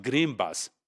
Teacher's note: the bilabial feature of b is changing n into m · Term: co-articulation